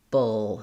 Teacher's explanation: we just go right from the B to that dark L